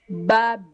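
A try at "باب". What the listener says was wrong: Il faut bien tirer. Je ne sais pas pourquoi vous avez toujours peur de tirer. Il faut bien tirer. Il faut bien tirer.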